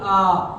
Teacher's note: विव्रत का मतलब होता है मुख द्वार पूरा खुले, जिसमें मुख द्वार पूरा खुल जाता है उसे बोलते हैं विव्रत। · आप किसी भी चीज को, मान लिया कि चोट लग जाए तब आप बोलते हैं आ, तो आप जब बोलेंगे तो डिब्बे की तरीके से पूरा मुंह आपका खुल जाता है, तब होता है हमारा विव्रत स्वर।